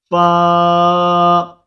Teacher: سامنے والے اوپر کے 2 دانتوں کے سروں کو نچلے ہونٹ کے تر حصہ پر لگا کر باریک آواز میں زیادہ سانس نکالے بغیر پڑھیں گے